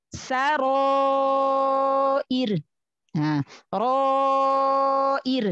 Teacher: Huruf sebelumnya ro fathah dibaca tafkhim, dibaca tebal, maka panjang alifnya juga tafkhim. Ditahan ketebalannya.